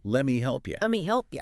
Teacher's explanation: Let me condenses. Often the T in let assimilates or drops, and the vowel in me might weaken. It becomes a lemmy.